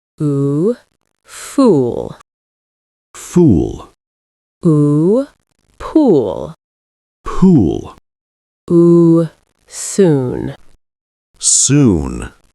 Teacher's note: Yeah, and also smoother, not cut off like the short sound. And notice your lips. They stay rounded a bit longer. · Each word feels longer. Yeah, and also smoother, not cut off like the short sound. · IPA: /uː/